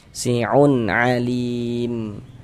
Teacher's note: Jadi bunyi nun sukun atau bunyi tanwinnya dibaca jelas. Kemudian tidak didengungkan, tidak dighunahkan. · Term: izhar halqi